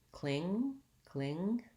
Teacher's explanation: make sure you end on the ng sound don't let your tongue drop to make a g